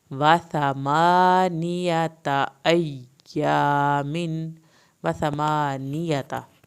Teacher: تا کی زبر کو لمبا نہیں کرنا۔ یا کی شد ادا ہوگی لیکن سختی نہیں دکھانی، یا کی شد پہ نرمی سے پڑھنا ہے۔